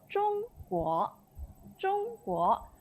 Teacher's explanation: Okay, so we are first tone combined with the second tone. So first tone again, ZHONG read as 中, and then second GUO we read as 国 because that is second tone.